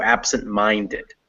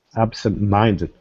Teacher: is the most stressed and absent is the second one so absent is still stressed but not as much as minded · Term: secondary stress